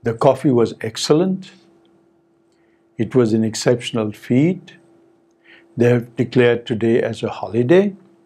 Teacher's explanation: all these sentences said with the rising tone